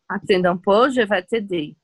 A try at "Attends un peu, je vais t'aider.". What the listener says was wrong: On ne prononce pas le D. Attends. Attends un peu. Attends un peu.